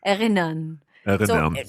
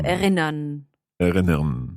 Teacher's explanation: So it's best if you don't really pronounce the R at the end. You just make a sound.